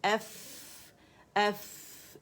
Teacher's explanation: اس میں بھی ہمس ہے, رخاوہ ہے